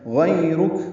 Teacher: غیرک غین پر پڑھیں گے، اور یا لین ہے کیونکہ یا ساکن سے پہلے زبر آئی ہے. یا کو نرم معروف طریقے سے پڑھیں گے، ہونٹوں کو پیچھے کی جانب کھینچیں گے. غیرک را پر پڑھیں گے اور کاف باریک پڑھیں گے اور کاف پہ ہمس ہوگا.